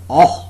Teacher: position no content being made between the tongue and upper molars the jaws are wide open and there is slight open lip rounding slight open lip rounding the tongue tip is behind the lower · back of the tongue is just below the half open position the back of the tongue is just below the half open position no content being made between the tongue and upper molars the jaws are wide open and there is slight open lip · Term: monothong